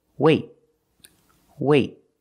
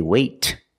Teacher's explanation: say weight I don't release the T it's a stop T I stop the air I stopped the air with my tongue in the T position